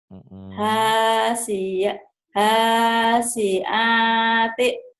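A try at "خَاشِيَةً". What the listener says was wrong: Bukan ha tapi kho. Khasyiati.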